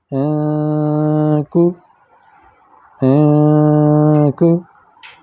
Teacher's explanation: یہاں دیکھیں نون ساکن کے بعد کاف ہے تو آواز لمبی ہوگی، کو، کو، آواز کچھ منہ سے اور کچھ ناک سے نکلے گی، اس کو اخفا کہتے ہیں۔